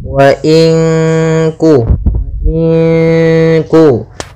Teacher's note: Ya, ada bacaan nun sukun bertemu dengan huruf kaf, maka cara membacanya itu kita samarkan nunnya kepada huruf kaf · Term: Ikhfa, ikhfa